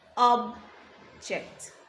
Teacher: the stress is on the first syllable making the first syllable a lot louder than the second syllable